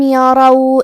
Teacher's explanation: کلمت یرو میں حرف الراء پہ زبر ہے، لہذا یہاں را کا حکم ہے تفخیم. ہم حرف الراء کو موٹی آواز میں پڑھیں گے